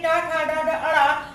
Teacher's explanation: जीभ हमारे पीछे को मुड़ गई है, मूर्धा की तरफ मुड़ गई, इसलिए इसको हम मूर्धन्य वर्ण कहते हैं